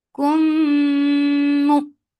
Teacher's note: keep the sound in your nose for a longer time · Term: idgham shafawi